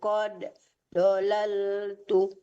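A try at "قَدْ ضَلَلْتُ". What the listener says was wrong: Nggak boleh tuh pakai tuh lagi, tunya nggak panjang, nggak boleh kalau dolal tuh.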